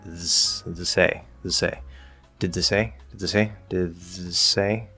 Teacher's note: you can go from did to th and then just slide from that th into the s.